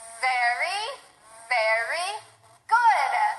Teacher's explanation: When you say that V sound, air still comes through. You use your vocal cords and your lips sort of tickle from the vibration